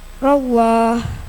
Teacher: lam jalalah tafkim lafaz Allah didahului fatha tebal bacanya